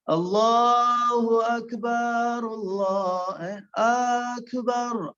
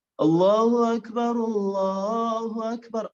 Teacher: با کے بعد آپ نے الف پیدا کر دی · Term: حرف بگڑ گیا